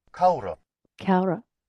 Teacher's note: the Connacht is almost dropping the ending and replacing it with an schwa type sound, that upside down backward E, schwa.